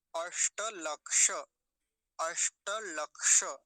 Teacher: ककार हलंत और मूर्धन्य शकार इन दोनों से मिलके बनता है ये, है ना। तो दोनों स्थानों पर मूर्धन्य शकारों का उच्चारण होना चाहिए